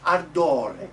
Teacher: And this A at the end is the bright one. Ardore. Not ardore, but ardore.